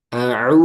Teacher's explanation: Domah dengan memonyongkan kedua bibir, mengumpulkan kedua bibir ke depan. Du, jangan no, no. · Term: harokat domah